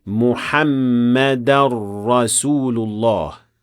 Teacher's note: there should also be idgham in this case between the noon of tanween and the ra which follows the word